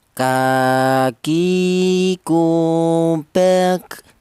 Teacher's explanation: Untuk huruf kaf, keluarnya huruf berasal dari pangkal lidah ya. Pangkal lidah itu lidah bagian belakang, itu ditempati dua huruf, yaitu huruf kaf ini dan huruf kof ya.